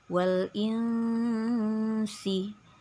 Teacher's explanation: Nun sukunnya harus dibaca samar ikhfa itu artinya samar-samar samar-samar Maksudnya kita membunyikan bunyi nun sukun ini sudah mulai terbayang-bayang akan penyebutan huruf selanjutnya yaitu Sin ya dan harus berdengung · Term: ikhfa Hakiki